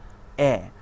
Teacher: নিম্ন মধ্য সম্মুখ ধ্বনি